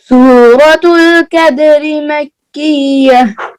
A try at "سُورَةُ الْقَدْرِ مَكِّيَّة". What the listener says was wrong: قاف کو کلیئر کریں. سورۃ القدر مکیہ.